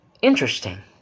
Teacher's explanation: The pitch falls and rises. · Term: fall rise tone